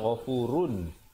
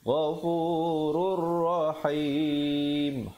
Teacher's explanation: asalnya ghafurun, ra tanwin dua, di depan bunyi run, tapi bila datang ra jadi ghafurur rahim. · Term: idgham bila gunnah